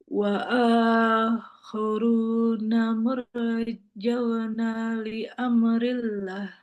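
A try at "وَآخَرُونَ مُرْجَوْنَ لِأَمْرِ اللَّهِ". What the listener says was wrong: Panjang. Lillah panjang.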